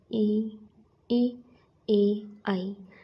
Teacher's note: वे स्वर जिनमें हमारी जीभ का आगे का भाग काम करता है। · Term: अग्र स्वर